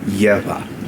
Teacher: That barred B is a bilabial voiced fricative, so it's a V sound, but if you're having trouble pronouncing the V sound, just say gebyā, and it's close enough.